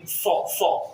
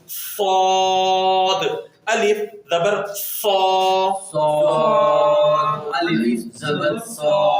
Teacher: دیکھیں صاد پر سیٹی کے ساتھ, دیکھیں حروف صفیریہ یعنی سیٹی والے حروف میں 3 حروف ہوتے ہیں, یعنی زا, سین اور صاد. صاد کو پر سیٹی کے ساتھ ادا کیا جاتا ہے